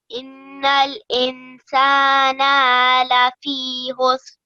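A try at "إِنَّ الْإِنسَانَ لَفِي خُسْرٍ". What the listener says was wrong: Just the noon with the fatha should only be said for 1 second, okay? Not longer, okay?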